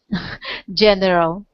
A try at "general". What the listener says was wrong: Uh, the first one being general. Close. Just 2 syllables here. General. Yeah, and we want to emphasize just the first syllable, so it sounds like general.